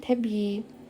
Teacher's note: Tələffüz zamanı i-nin biri düşəcək, digəri isə uzun tələffüz olunacaq.